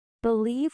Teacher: Believe with stress on the leaf syllable